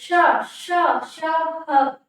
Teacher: जब हम इनका उच्चारण करते हैं दोस्तों तो वायु जो है वो एक रगड़ के साथ बाहर आती है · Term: संघर्षी व्यंजन